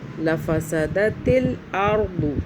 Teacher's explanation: را کو موٹا کریں گے، را ساکن ہے